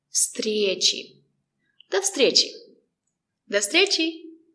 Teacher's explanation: The letter V is pronounced as f. There's no voice.